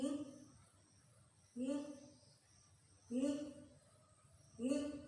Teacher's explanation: produced from the nostril, nasal, velar, nasal. The place of articulation is a velar, the manner is a nasal.